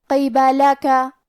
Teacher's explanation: کلمت قبلہ کا یہاں حرف القاف ہے اور قاف کی ادائیگی زبان کے جڑ اور تالو کے نرم حصے سے ہے. قاف کے نیچے زیر ہے اور حرف البا پہ اور لام پہ اور کاف پہ تینوں پہ زبر ہے، لہذا ہمیں یہ چاروں حرکات کو برابر سے ادا کرنا ہے.